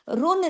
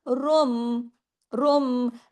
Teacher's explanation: इस बा के आने की वजह से इकलाब का कायदा ये कहलाता है कि नून की आवाज मीम में तब्दील हो गई।